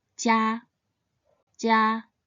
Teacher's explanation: it should be pronounced in the first tone